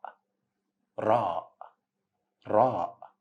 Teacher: it's same pronunciation of R in the word ring in English but it's a flapping letter